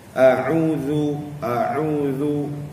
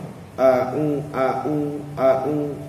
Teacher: Dia tak keluar ain tu, tak sampai ke tahap makhraj huruf ain tu. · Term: bunyi ain